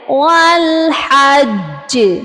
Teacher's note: ٹھیک ہے، والحج، یہاں پر بھی آپ دیکھ لیجئے جیم کے اوپر تشدید ہے اور زبر بھی ہے، زبر ڈراپ ہوگی اور وقف کی صورت میں جب ہم یہاں قلقلہ کریں گے تو ہم نے کیا کرنا ہے والحج، جیم کی زبر کو ڈراپ کریں گے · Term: قلقلہ اکبر